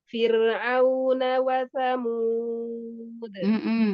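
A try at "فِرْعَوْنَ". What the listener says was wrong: Fir'au, auna, hindari guna huruf ain tanpa guna. Fir'auna wa Samud. Fir'au, Fir'auna. Ain masih ada suara lain. Fir'au, Fir'auna.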